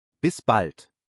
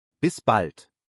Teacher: Notice that elongated a sound again in the word bald from the phrase Bis bald. B A L D Bis bald.